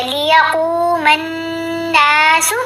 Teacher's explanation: میم کو نون سے ملاتے ہوئے گننا ہے، پھر نون کے ساتھ حرف مدہ بھی ہے تو لمبا بھی کیا جائے گا · ساکن پڑھ رہے ہیں نا تو کو وقف کرنے کے لیے، تو جب وقف کیا ساکن پڑھا تو پھر کلکلا بھی کرنا ہے